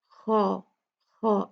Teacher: خا کو اور الف کو موٹا پڑھا جائے گا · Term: خا ہیوی ہے